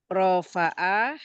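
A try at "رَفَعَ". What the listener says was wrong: Enggak, rofa'a. Jadi kalau rofa'a tanpa panjang itu domir huwa. Kalau domir huma itu panjang, rofa'a. Gini, huwa rofa'a.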